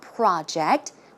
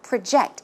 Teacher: the stress goes in the second syllable